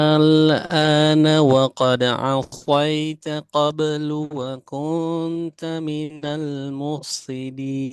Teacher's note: Al an bertemu huruf hamzah sehingga dia nggak diidghamkan ke hamzah tapi dibaca jelas lamnya. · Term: mukhaffaf